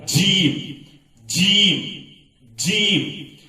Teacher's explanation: جیم جو ہے مسوڑوں کے پیچھے کے دانتوں کو اچھی طرح جم کے دبا کے اور زبان کے بیچ کے حصے کو تارخ کو لگانے سے نکلتا ہے